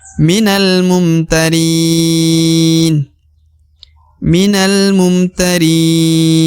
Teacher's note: Huruf ri dibaca 2 atau 4 atau 5 harokat ya panjangnya.